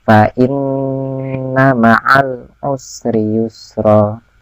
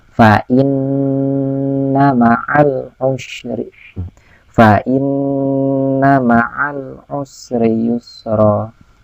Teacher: Nah, jadi fa'in ditahan, fa'inna ma'al usri yusra, ya. Nun sukunnya, nun tasdidnya ditahan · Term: gunnah